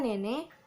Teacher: bunyi E agak rendah, berada di depan, dan tidak bulat